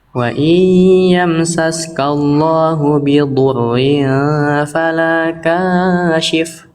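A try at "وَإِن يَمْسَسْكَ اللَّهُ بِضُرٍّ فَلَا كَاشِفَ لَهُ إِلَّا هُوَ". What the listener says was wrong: Oke, kashif kahnya jangan kepanjangan ya. Kashif boleh di situ tapi jangan kepanjangan.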